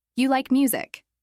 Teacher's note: said with a flat or falling tone sounds like a statement